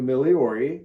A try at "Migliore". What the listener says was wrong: Migliore. The G is silent.